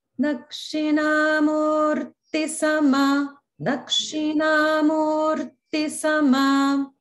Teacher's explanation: in Murti, the Ti is Hrasva, so it doesn't get elongated